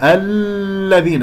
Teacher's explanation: لا تمسك اللامات، لا تطل الزمن اللام · الذين اللام اسمية مدغمة مرققة